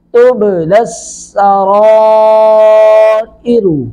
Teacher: با ساکن پہ قلقلہ ہوگا، یعنی با کی آواز لوٹ کے آئے گی